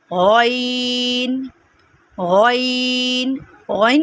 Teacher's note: हम ओइन को पढ़ते हुए अपने हलक पे ज़ोर देंगे तो हमारी ओइन की आवाज़ निकलेगी।